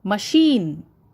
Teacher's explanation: Ma is not stressed at all. Sheen is stressed. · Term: word stress